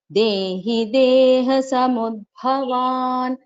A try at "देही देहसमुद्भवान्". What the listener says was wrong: Dehi is dirgha bhagini. It is not dehi deha. Dehi deha samudbhavan.